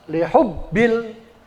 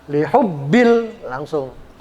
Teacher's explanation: Ya cukup digentak aja tapi nggak boleh ditahan huruf ba-nya.